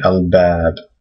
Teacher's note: you do pronounce the AL because this is a moon letter